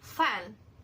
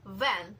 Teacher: F is voiceless while V is voiced. But they are same in place of articulation and manner of articulation, which is labiodental fricatives. So labiodental fricatives, these are sounds formed using upper teeth and lower lips.